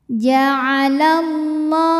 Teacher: Cara membacanya, alif lam tidak kita baca atau dinamakan dengan idgham syamsi